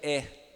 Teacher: temos o vocóide anterior médio aberto, que é o E.